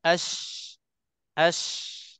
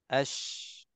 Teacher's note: Tempo itulah yang disifatkan dengan tafashi. Tafashi tersemburnya sebutan ataupun laluan angin yang keluar dari mulut kita.